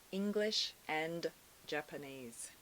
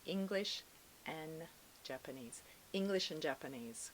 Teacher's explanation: almost like and is like an n sound